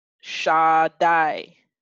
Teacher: and then you have a consonant pad tacking a yo and both of those diphthongs are pronounced as I